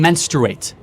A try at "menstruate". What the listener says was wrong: Okay, because you're saying mensurate, and it's like kind of a little.